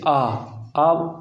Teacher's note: फिर आता विवृत स्वर, मतलब पूरा विवृत स्वर में क्या होगा, मुख होगा वो पूरा खुला होगा, जैसे आ का उच्चारण करते तब मुख है वो पूर्ण रूप से खुल जाता है, तो ये विवृत स्वर है।